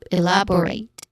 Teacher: the stressed syllable is on the second syllable, love